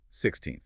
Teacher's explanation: normally, the word 16th is stressed on the second syllable, 16th. The natural stress falls at the end of the word.